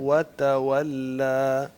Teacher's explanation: دونوں ہونٹوں کو گول کرنا ہے دونوں واؤ کے وقت